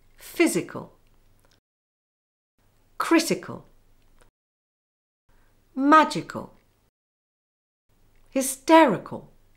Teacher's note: In these words, the stress is on the antepenultimate syllable.